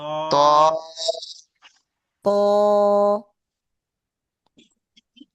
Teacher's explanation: আর ত একটু মোটা হবে। ত বলার সময় একটু ভিতরে মোটা হবে।